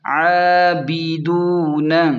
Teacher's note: عین کھڑا زبر عین پر کھڑا مد ہے تو 1 الف کے برابر کھینچیں۔ با زیر بی، دال واو پیش دو، اسے تھوڑا سا کھینچ کر پڑھیں کیونکہ واو مدہ ہے۔